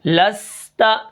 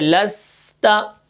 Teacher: سین کی سیٹی کے ساتھ، آگے تا ہے تو سیٹی کو برقرار رکھیں گے